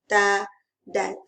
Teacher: Kedua-duanya di hujung lidah kita letak di depan gigi hadapan. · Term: makhraj sama